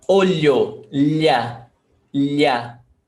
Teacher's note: So there's a very light L sound in there.